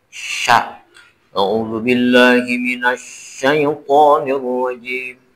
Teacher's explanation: jadi huruf sya ini harus tafasyi, harus ada hembusan napas yang keluar dari rongga mulut kita.